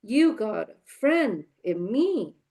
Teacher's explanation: So this shows strong, weak, strong, weak, strong. Okay. So here you see we see the capitalized words as the stronger syllables and the dots as the weaker fillers. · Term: rhythm